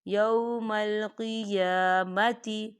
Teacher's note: مثل قولہم فاللہ یحکم بینہم یوم القیامۃ، قیامتی، یا کھڑی حرکات ہے 2 حرکت کے برابر کھینچیں گے